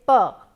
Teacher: I am blocking the air with two of my lips